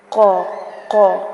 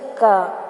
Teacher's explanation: قاف جو 2 نقطوں والا ہوتا ہے اس کی آواز حلق کے قریب سے آتی ہے، قا قا اندر سے ساؤنڈ آتی ہے، جبکہ جو ڈنڈے والا کاف ہوتا ہے اس کی آواز تھوڑا منہ کے قریب سے آتی ہے